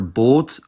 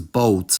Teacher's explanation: perfectly monophthongal in Belgium, while in the Netherlands, the mouth closes a bit over the duration of them